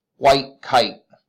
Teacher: The spondy, which then would be spondaic, is 2 hard stresses.